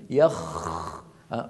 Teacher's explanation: بعض الذين يقرؤون وخاصة الذين يرفعون صوتهم في الحفلات يعني في المحافل وغيرها يقول مثلا يخرج منه يخ، فيخرج يخرجونها بضغط على مخرجها وكأن فيها صوت يشبه الشخير